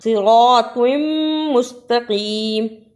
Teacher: صراط مستقیم، اسے صراط مستقیم نہیں پڑھنا، را کو بھی پر پڑھنا اور توا کو صحیح ادا کرنا، تا کے ساتھ ادا نہیں کرنا ہے